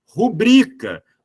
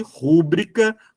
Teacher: daquela coisa de rúbrica como muito se di diz por aí a palavra ela tem acentuação mais forte na penúltima sílaba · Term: paroxítona